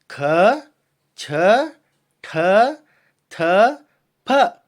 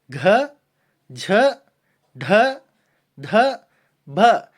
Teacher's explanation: ಅದೇ ರೀತಿ ಎರಡನೇದು ಮಹಾಪ್ರಾಣ ಅಂತ ಕರೀತೀವಿ ಮಹಾಪ್ರಾಣದಲ್ಲಿ ಕೂಡ 10 ಅಕ್ಷರಗಳು ಬರುತ್ತೆ ಹೆಚ್ಚು ಉಸಿರಿನಿಂದ ಉಚ್ಚರಿಸುವ ಅಕ್ಷರಗಳು ಅಂದ್ರೆ ಎರಡು ಮತ್ತು ನಾಲ್ಕನೇ ವರ್ಗದ ಅಕ್ಷರಗಳಿಗೆ ಮಹಾಪ್ರಾಣ ಅಕ್ಷರಗಳು ಅಂತ ಕರೀತೀವಿ